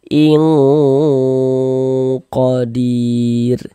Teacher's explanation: di bagian ingnya tuh suaranya itu kita tahan. Kita panjangkan saja nak sepanjang dua harakat kita gunahkan. In qodim. dir dibaca panjang.